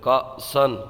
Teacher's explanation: یہاں پر حمزہ کو جھٹکا دے کے پڑھیں گے